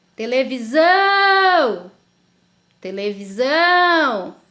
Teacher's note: então a sílaba tônica da palavra televisão é o zão